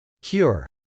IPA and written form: kjˈʊr (cure)